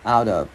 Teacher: Cái chữ T này biến vào chữ O thành chữ the tiếng Việt nhẹ